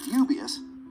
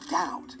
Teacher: You can hear the B in dubious, but it's silent in doubt. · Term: silent B